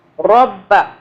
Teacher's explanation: یہ جو را ہے اس کو را پڑھنا ہے، را باریک نہیں پڑھنا، رب۔ وَلَا تَكْتُمُوا الشَّهَادَةَ، سٹاپ کرے ہیں تو شہادہ پڑھیں گے، تا زبر تا نہیں پڑھیں گے۔